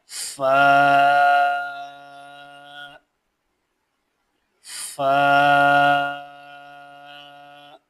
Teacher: اوپر والے دو دانتوں کا سرا اور نیچے کے ہونٹ کا اندرونی حصہ، اس سے فا ادا ہوتا ہے